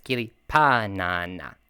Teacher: remember that the stress is on the first syllable of the word